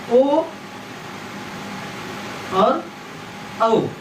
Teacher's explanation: ओ दो तो कंठोष्ठम, जैसे छोटा आ और ऊ मिलकर के ओ बनता है